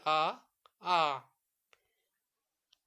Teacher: विवृत स्वर के उच्चारण में मुंह द्वार जो है पूरा खुला होता है